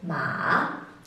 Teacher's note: the fourth tone decreases in pitch · the second tone or the rising tone increases in pitch